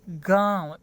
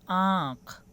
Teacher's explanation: अनुस्वार का उच्चारण नाक के द्वारा होता है, लेकिन अनुनासिक का उच्चारण नाक और मुंह दोनों से होता है।